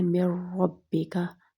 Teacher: अब यहाँ पे हमने गुन्ना नहीं किया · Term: इदगाम बगैर गुन्ना